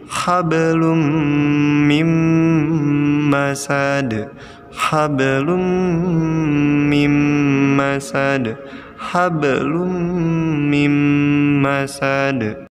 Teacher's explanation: Jadi nunnya dimasukkan ke dalam mim ya. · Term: idgham bila gunnah